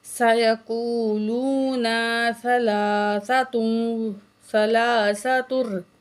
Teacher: لام کے اوپر کھڑی زبر ہے، ایک الف کو برابر کھینچیں گے